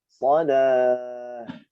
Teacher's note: Marbutahnya hilang. Nah, marbutah ketika waqaf berubah menjadi huruf ha sukun